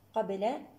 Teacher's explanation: القاف هنا مفخمة من الدرجة الثانية، القاف مع الباء.